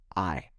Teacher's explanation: It has two sounds, and it moves from one sound to another. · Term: diphthong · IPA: /aɪ/